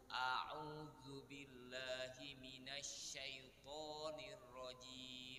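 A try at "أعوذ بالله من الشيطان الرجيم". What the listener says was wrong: Ya, sekarang betul semua.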